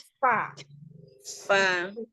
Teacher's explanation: Ujung gigi atas bertemu dengan bibir bawah bagian dalam yang basah. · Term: huruf fa